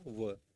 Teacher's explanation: मतलब दांत और होठ दोनों को मिलाकर बोला जाए तो उसको क्या नाम दंतोष्ठ उसमें में एक ही वर्ण आता है ओनली कौन सा व